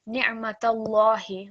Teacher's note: because this time lam mushaddad in Allah is preceded by a fatha stroke, we are going to read this lam mushaddad thick. So just slightly thicker, ni'matallahi rather than ni'matallahi.